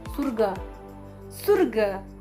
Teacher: Semisal, penekanan tuh terdapat pada akhir kalimat, yaitu surga.